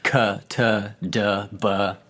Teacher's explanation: you're holding that air back and then you're releasing it all at once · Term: plosives